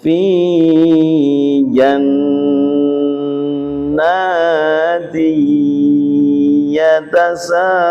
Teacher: suara tanwin diganti suara ya, sehingga bacanya fi jannati yatasaaluna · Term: idgham biguna